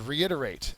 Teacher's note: To reiterate is a verb. The second syllable is accented.